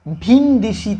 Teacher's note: একার পরবর্তী হ্রস্বইকারের প্রভাবে কিন্তু এ পরিবর্তিত হয়ে গেছে। একারটা হ্রস্বইকারে, দেখো হ্রস্বই আর এ দুটোর মধ্যে ব্যবধান খুব কাছাকাছি, তাই পরবর্তী হ্রস্বইকার কি করছে, আগের একারকে হ্রস্বইকারে পরিবর্তন করে নিচ্ছে। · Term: পরাগত স্বরসঙ্গতি